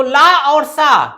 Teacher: ला और सा ये दांत से या दंत से उच्चारित होने वाले व्यंजन होते हैं